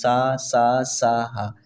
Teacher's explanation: हवा आती है बाहर मतलब ऊषम व्यंजन है चलिए अगला प्रश्न करेंगे जो आप सभी के लिए मो क्वेश्चन